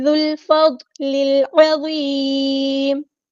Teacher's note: عین کو وسطی حلق یعنی مڈل تھروٹ سے ادا کرنا ہے · العظیم، وہ ہمارا ہیوی لیٹر ہے، پورا ادا کریں گے، اور میم کو ہم ساکن کر دیں گے وقف کرتے ہوئے، مد عارض بھی ہوگی یہاں پر